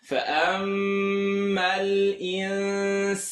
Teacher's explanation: Mim shadda, full nasal sound. Nun sukun followed by sin. Tongue not touched. Stretch for 2.